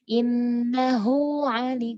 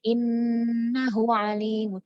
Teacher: Dipanjangkan, makanya terjadilah sifat mat silah ini biar kedengaran huruf H-nya. Tapi ini ketika bersambung aja, ketika wasol.